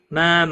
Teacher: مد متصل ہے، 5 الف کے برابر کھینچ کر پڑھیں گے